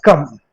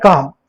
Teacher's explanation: काम को बोलने में इससे ज्यादा समय लग रहा है, क्योंकि इसमें किसका प्रयोग हुआ है, दीर्घ स्वर का प्रयोग हुआ है